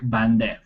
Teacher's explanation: in New Persian it lost its last consonant, becoming in Classical Persian a, and then in Modern Persian e